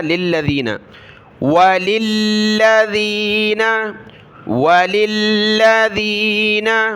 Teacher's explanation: لام کو دوسرے لام کے ساتھ ملایا